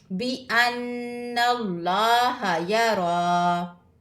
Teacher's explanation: यहाँ पे क्या है, लफ्ज़ अल्लाह से पहले ज़बर है, तो इस अल्लाह के लफ्ज़ को मोटा पढ़ेंगे, यानी कि पुर पढ़ेंगे, बरीक नहीं पढ़ेंगे.